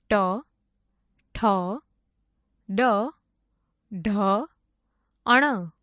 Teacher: જે વર્ણોનું ઉચ્ચારણ કરતી વખતે જીભને મોઢાના તાળવાનો સ્પર્શ કરવો પડે તેને મૂર્ધન્ય વર્ણો કહે છે